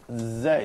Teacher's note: So if you just say Zay, then you can find a kind of vibration